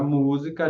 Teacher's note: Na palavra música já é a terceira a mais forte, contando de trás para frente